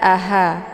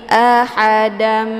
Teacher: ada desis angin yang agak samar-samar atau biasa dikenal dengan ha kecil